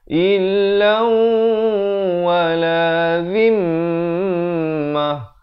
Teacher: mim sabdu didengungkan 2 harakat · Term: wajibul gunnah